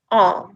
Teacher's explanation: it is as low in the mouth as it can possibly be it's hardly being raised at all when we say ah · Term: back open vowel